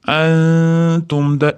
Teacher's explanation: Nunni t'da chiqadigan joyga yashiramiz. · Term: ixfo